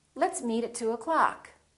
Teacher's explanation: meet at 2 o'clock so don't say @ + o clock reduce the o in the word o'clock